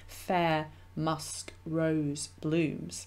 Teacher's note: you also have the sibilance so the repetition of the s sound and that kind of intensifies as the line goes along it